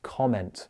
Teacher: Comment. I'm stressing it. I'm not using a schwa sound.